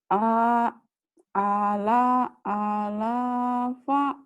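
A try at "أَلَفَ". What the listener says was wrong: Alafa. A-nya panjang. Alafa.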